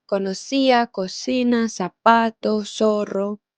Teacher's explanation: En Andalucía y en las Islas Canarias, por ejemplo, pronuncian la C y la Z como una S, como yo lo hago aquí en Colombia, mi país.